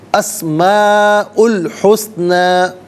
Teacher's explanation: اچھا دیکھیں، دونوں طرف نا اسم سین اور حسنہ میں سین، اس کو بالکل ساکن پڑھیں، اس کو حرکت نہ دیں